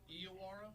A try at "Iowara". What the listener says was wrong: No, it's Aya, because I asked her if it was EYE, and she said no.